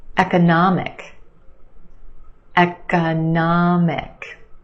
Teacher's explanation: we've got four syllables the third syllable is your stressed syllable nah the ah sound economic and we have a schwa in